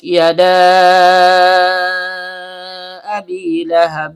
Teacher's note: yada abi lahab ta huruf ujung lidah bertemu dengan pangkal gigi seri atas ba huruf bibir ta lagi ujung lidah bertemu dengan pangkal gigi seri atas ya tengah lidah naik memantul ke langit-langit dal ujung lidah bertemu dengan pangkal gigi seri atas karena dalnya berharakat fathah diikuti alif layyinah maka seharusnya terjadi mad thobi'i.